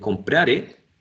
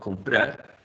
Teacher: people would not finish words in a final r, right? But they would add a sound e.